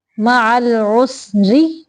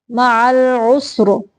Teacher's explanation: وصل کی صورت میں را باریک ہوگی اور وقف کی صورت میں را کو موٹا پڑھیں گے